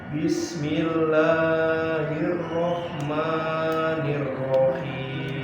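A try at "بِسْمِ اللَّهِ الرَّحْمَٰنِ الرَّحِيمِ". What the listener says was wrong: Nah ini yang lam dengan ini pendekkan. Bismillahirrahmanirrahim. Dua harakat saja lam dengan ini.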